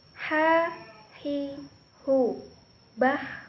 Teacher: Huruf ini dikeluarkan dari tengah tenggorokan. Dilafalkan persis seperti kita melafalkan kata ayah. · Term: huruf H